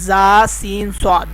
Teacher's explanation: زا، سین، صاد کو ادا کرتے وقت سیٹی کی طرح تیز آواز نکلتی ہے، اس لیے ان حروف کو حروف صفیریہ یعنی سیٹی والے حروف کہتے ہیں۔